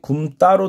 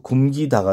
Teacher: 피동이나 사동점미사 기가 들어가면은 된 소리 되기가 적용되지 않는다